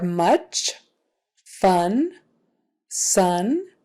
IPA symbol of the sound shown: ʌ